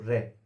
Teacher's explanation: रे जब बोला तो जीभ ऊपर तालू में वाइब्रेट कर रही है, रगड़ खा रही है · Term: लुंठित व्यंजन